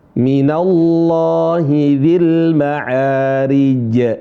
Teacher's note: jangan malu-malu untuk mengqalqalahkan membunyikan suara pantulan di huruf jim ya